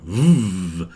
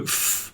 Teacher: what you do with your mouth is the same but the V is a voiced version so you go f like an F but you vibrate your throat and go V